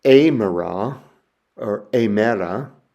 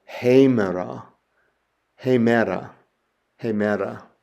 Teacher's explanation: adds an H sound to that beginning letter. So instead of amera or amera, we would go hemera, hemera, hemera, day. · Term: rough breathing mark